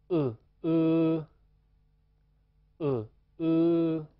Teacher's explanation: 前面一个是短元音，后面一个是长元音，短元音二声，长元音一声